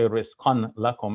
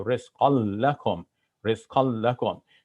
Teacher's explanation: the noon of tanween gets assimilated into that next letter. So you see it happening with the lam as well, where we had rizqan lakum, rizqan, but we're not going to say rizqan lakum, we're going to say rizqal lakum, rizqal lakum.